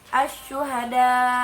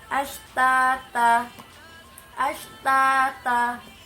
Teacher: Nah, huruf tafashi hanya ada satu, yaitu huruf sya. Jadi ketika kita mengucapkan huruf sya, nafas yang kita hembuskan itu menyeluruh di dalam mulut kita, sehingga seperti tadi, menurut bahasa tafashi artinya menyebar dan meluas.